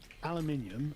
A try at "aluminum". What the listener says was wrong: Where do you get the I in aluminium? No, the second one.